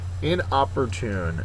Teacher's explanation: The last syllable, the fourth syllable, is accented.